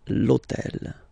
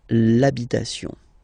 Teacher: remember that in French we don't pronounce H, okay? So basically the first sound of the word is the vowel O, okay?